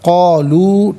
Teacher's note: قالو میں جو لو ہے نا، واو مدہ ہے، اسے کھینچ کر پڑھنا ہے، ایک الف کی مقدار